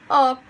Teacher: Now we have the vowel sound O, which is a closed mid front vowel. The front of the tongue is raised between the closed mid and open mid position. Lips are loosely spread and slightly wide apart.